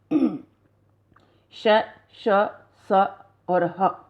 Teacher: इन व्यंजनों के उच्चारण में श्वास तीव्र गति से मुख से रगड़ खाती हुई बाहर निकलती है। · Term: ऊष्म व्यंजन